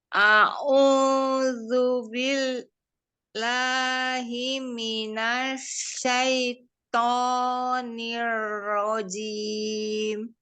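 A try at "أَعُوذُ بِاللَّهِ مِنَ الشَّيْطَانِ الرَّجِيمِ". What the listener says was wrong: ini barusan memang benar kurang ke bawah. Masih kesebutnya malah ain. Kalau tadi ketekan, ini malah memang ke ain. Tertukar ya. Jangan ain dulu baru alif, tapi alif dulu baru ain.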